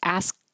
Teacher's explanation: the K you won't release. So just hold your tongue in the K